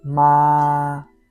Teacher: First tone high and steady. Ma it means mom. It sounds like you are singing a flat note.